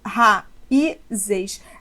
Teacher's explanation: Agora, o I está sozinho na sílaba tônica e ele forma hiato com vogal da sílaba anterior. Por isso que raiz não tem acento, mas seu plural raízes terá.